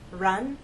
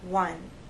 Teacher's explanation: with r there's a gentle rounding of the lips but you hold that position until you get to the next sound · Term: r sound